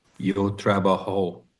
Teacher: This word ends in a vowel. The emphasis would go on the second last syllable